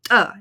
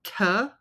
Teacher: so there is a lot of air coming out and then ejective is it has more clicking sound versus the aspirated one which has more soft softer sound